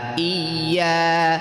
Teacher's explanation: زور سے ملانا، تشدید کی آواز میں یاد رکھنا ہے کہ ایک قسم کی سختی ہوتی ہے۔